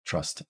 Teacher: So with trust, this is trust. This is a stressed syllable. So we don't have a schwa here, but we have the caret. We have trust.